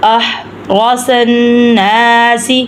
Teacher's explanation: احرص الناس، ادھر بھی گنہ ہوگا، نون ناک میں سے ہم آواز نکالیں گے